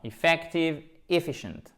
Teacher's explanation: Accent tonique à chaque fois sur la deuxième voyelle. Ici, c'est effective et là, c'est bien un i court, efficient, ok?